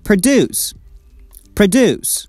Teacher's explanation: when it comes to its verb form, we pronounce it like produce. Produce. We stress the second syllable.